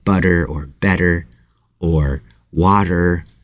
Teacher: D sound is a little bit heavier a little thicker and you want this sound this flap te in butter or better or water or these different words to be lighter than the D sound and not as sharp as the T sound but again it's somewhere right in the middle if you go